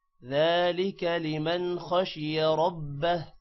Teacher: हुरूफ हल्की की वजह से लिमन पर गुन्ना नहीं होगा